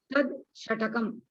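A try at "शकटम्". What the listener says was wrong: Not shatakam, shakatam. Shakatam. Not tad. The screen, it is tat only, is not tad. Tat shakatam. Not tad. T-A-T, not T-A-D.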